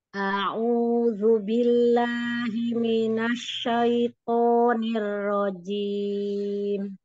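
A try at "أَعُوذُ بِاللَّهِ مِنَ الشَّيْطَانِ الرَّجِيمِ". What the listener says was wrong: Domahnya Bun, majuin dikit bibirnya. Di domah. Minasnya di ini lagi. Minasy syai minasy udaranya lebih ini lagi.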